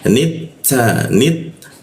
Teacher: huruf ta bocor halus kenapa karena ujung lidah bertemu gigi ada desisan sedikit ya